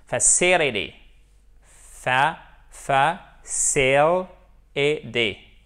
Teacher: Vous avez l'accent tonique ici, mais le L est compris dans la syllabe porteuse de l'accent tonique